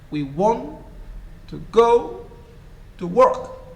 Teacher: So in a sentence, we do not pronounce all the words the same. We want to go to work. Want, work are stressed. Other words are weak.